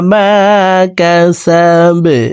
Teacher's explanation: বা কলকলার হরফ নিচের দিকে ধাবিত করে বাকে সাকিন করে ফেলবো।